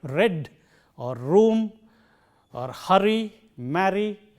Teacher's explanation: This is a frictionless continuant, r, as we have in a word like red or room or hurry, marry, etc.